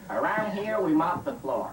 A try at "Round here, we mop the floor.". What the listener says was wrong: Round. Tu peux même éliminer le A. Dis juste round here. Round.